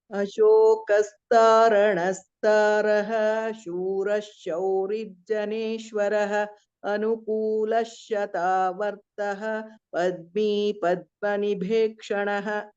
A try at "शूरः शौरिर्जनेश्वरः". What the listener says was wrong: Small observation is here it is Shura Shaurir Janeshwarah. There is one refa here. Shura Shaurir Janeshwarah.